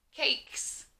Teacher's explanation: when i say the word cakes i don't hear long eye like in a lot of our other words i hear long a